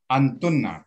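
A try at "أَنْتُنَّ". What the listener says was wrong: tasdid ya.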